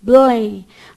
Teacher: O L é alvéolo dental. Ele é atrás do seu dente no céu da boca.